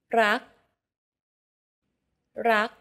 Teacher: consonants in thai are unreleased take the previous example for love do you notice how air in the final k sound is not expelled